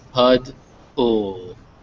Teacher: So you really want to make sure that that ol sound comes through. There's not really much of a vowel sound in there. It's mostly just pud, ul.